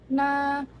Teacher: konsonan sengawan, apikoalveolar, bersuara